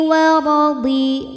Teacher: Huruf ra dibunyikan secara tafkhim karena ro-nya berbaris fathah, maka dibaca tebal. Cara menebalkannya adalah dengan mengangkat pangkal lidah.